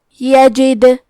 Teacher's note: یہاں دال کا حکم ہے قلقلہ، تو ہم یہ حرف کو ہلاتے ہوئے یہ کلمہ کو پڑھیں گے